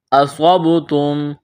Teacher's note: میم ساکن کے بعد میم مشدد ہے، میم کا میم میں ادغام کریں گے، غنہ کریں گے